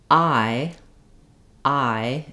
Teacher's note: I'm gliding from a similar place that I'm in the ah, and lifting and relaxing the tongue. So it starts tense, ah, and it ends in e or I. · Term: diphthong